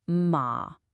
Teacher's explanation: In natural, everyday speech, it just goes down and stays down. It's low and a little bit creaky in your throat. That's why we call it the zombie tone.